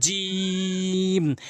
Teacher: জিব্বার মাঝখানটি উপরে তালুর সঙ্গে লাগাবেন, 3 আলিফ টেনে পড়বেন